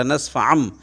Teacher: نون پھر حذف ہو جاتا ہے، مطلب اس کی جگہ میم پڑھا جاتا ہے